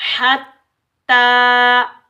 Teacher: ता मुशद्दिद को तशदीद आने की वजह से सख्ती से अदा करेंगे · हत्ता याती यल्लाहु, या हमजा ज़बर या, हमजा साकिन को हम झटके से अदा करेंगे, बगैर खींचे पढ़ेंगे।